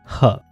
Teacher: Glottal sound एक ही है, ह। ये आपके वोकल कॉर्ड से प्रोड्यूस होता है, इसीलिए इसे ग्लोटल साउंड कहते हैं।